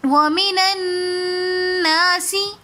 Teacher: نون مشدد ہے تو اس لیے ہم نے غنہ کر کے پڑھا. وَمِنَ النَّاسِ نون مشدد اور میم مشدد پر ہمیشہ غنہ ہوتا ہے.